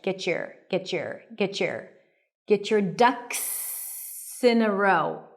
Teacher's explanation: When the T appears before a y sound, what happens is that you get a little bit of a ch sound in American English.